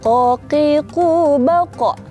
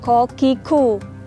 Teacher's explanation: Jadi nggak ada hembusan nafas. Kalau hembusan nafas, nanti jatuhnya ke sifatnya huruf kaf. Nah, kalau ko, dia itu nggak ada hembusan nafas.